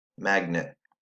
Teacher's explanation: Schwa syllable happens in the second syllable. It's the quieter syllable. E says I. A is making its expected short sound.